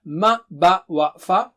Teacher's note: Ma, ba, wa, fa are from the lips.